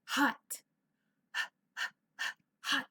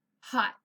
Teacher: So if you open your mouth, you can make this sound and you can feel it on your hand. Okay, so it's going to be an unvoiced because we can feel the puff of air. Hot. We don't use our voice box, we use the air.